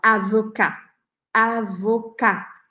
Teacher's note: Se a profissão termina com um T, por exemplo, advogado, em francês a gente fala avocat, avocat, sem falar o T, você deixa a boca aberta, avocat. No feminino, avocat, avocat, eu ponho o E no final e isso me faz pronunciar esse T.